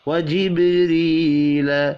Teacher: खड़ी ज़ेर को एक अलिफ के बराबर खींच कर पढ़ना है। व जिब्रील, बा साकिन पर कलकला करेंगे